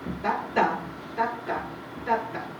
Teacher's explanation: un ritmo de dos secuencias, de dos golpes, uno más débil y uno más fuerte